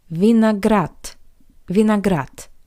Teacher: the voiced consonant D at the end of this word also sounds like the paired voiceless consonant T.